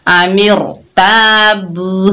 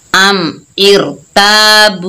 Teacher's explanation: रा साकिन है और उससे पहले दूसरे कलमे में जेर है, तो रा को हमने बारीक पढ़ने के बजाय हम रा को मोटा पढ़ेंगे, क्योंकि ये रा की दूसरी शर्त हमने पूरी करनी है। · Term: रा को मोटा पढ़ना